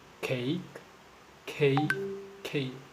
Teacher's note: a contact between the tongue and the soft palate